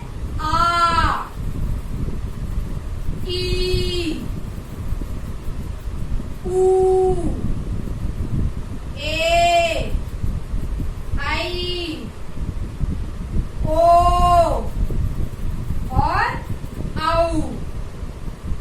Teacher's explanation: जो दीर्घ स्वर है उसके उच्चारण में हमें ह्रस्व स्वर के दुगना समय लग रहा है